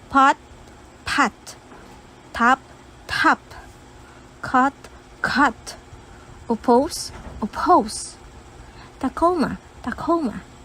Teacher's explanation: As you can observe, H sound is being inserted in words. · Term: aspirated words